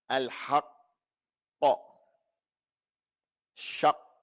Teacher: As for the kaf, the qaf and the kaf, as far as the tongue, it's the same area on the tongue. But the qaf, all of it is in halak al-lahmi, that jelly-like area in the back of your mouth.